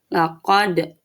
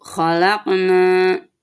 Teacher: laqad dibaca memantul atau qalqalah